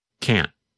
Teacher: n n lasts longer than in the negative form in fact in the negative form because the tongue and voice stop there is almost no sound of the letter N